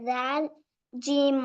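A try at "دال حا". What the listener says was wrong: ரெண்டாவது பிழை தால் ஜீம் என்று சொன்னது.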